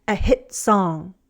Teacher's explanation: American English speakers also use a glottal stop sometimes in place of a T. We cut off the sound when T is at the end of a sentence or before a pause.